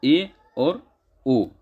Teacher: ठीक है, अर्ध समृद्ध स्वर मुख द्वार कुछ बंद, मतलब थोड़ा सा खुला होगा, थोड़ा बंद होगा